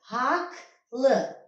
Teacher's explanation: Haqlı yazılacaq. Özündən sonra cingiltli samit gəlməsinə baxmayaraq k samitinə keçəcəkdir. Çevriləcək haqqlı.